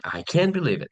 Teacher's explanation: rising and dramatic tone emphasizing believe